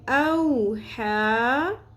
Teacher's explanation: ہا کھڑی زبر ہا، ایک الف کے برابر کھینچیں گے